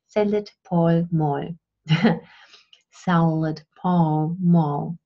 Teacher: Germans often have a hard time producing a dark L, and so they say salad, Paul, Moll.